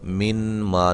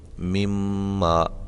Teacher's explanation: نون ساکن کا میم متحرک کے اندر ادغام ہو رہا ہے، یہاں دیکھیں، یعنی کہ ایک حرف کو دوسرے حرف میں داخل کیا اور پھر اس کو ہم نے مشدد کر دیا۔ اب اس میں نون واضح نہیں پڑھا جائے گا، نون کی آواز جو ہے وہ ظاہری طور پہ بالکل ختم ہو جائے گی، لکھنے میں تو آئے گا مما، اس کو ہم کس طرح من ما نہیں بلکہ مما، ٹھیک ہے، یہ ادغام ہو رہا ہے۔